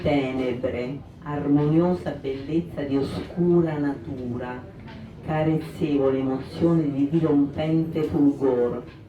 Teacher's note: la prevalenza della consonante R, che è una vibrante sonora